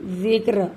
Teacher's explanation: را بھی ساکن اور کاف بھی ساکن اور زال پر زیر ہے، اس لیے اس را کو باریک پڑھیں گے